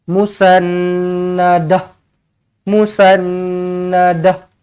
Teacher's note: Tukarkan ta marbutah menjadi huruf ha.